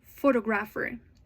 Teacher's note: In photographer, the stress moves to the second syllable.